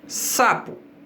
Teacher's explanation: se nós pegarmos a palavra sapo, a sílaba tônica vai ser o sa.